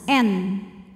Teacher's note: Sebab ada tanwin dhammah menghadapi huruf halqi yaitu ha, huruf tenggorokan. Maka tanwin ini kita bunyikan dengan jelas. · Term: idhar halqi